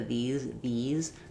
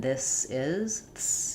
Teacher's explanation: The E vowel is probably in your native language, whereas the I vowel with the tongue a little lower and more lax is probably not in your native language. These also has the Z sound at the end, whereas this has the S sound at the end. So again, you can do these are to feel that voicing of the z, and this is, you can hear it's a strong S, and here's a weak Z.